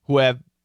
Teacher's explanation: The H is gone.